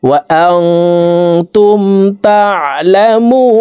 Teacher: ফাত্তাকুন ওয়া ইয়্যায়া ফাত্তাকুন ওয়ালা তালবিসুল হাক্ক ولا تلبسوا الحق بالباطل بالباطل وتكتموا الحق وأنتم এখানে ইকফা গুন্না নুন সাকিনের পরে ইকফার হরফ তা আসছে, এই কারণে এই নুন সাকিনকে নাকের ভিতরে লুকাইয়া গুন্নার সহিত পড়ব।